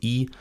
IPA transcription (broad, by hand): i